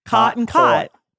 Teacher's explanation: in California you say those words the same